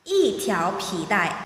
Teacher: E is followed by a syllable in the second tone, so E is pronounced the fourth tone.